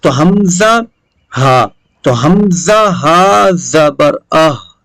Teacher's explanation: تو آواز نکلے گی حلق کے نیچے والے حصے سے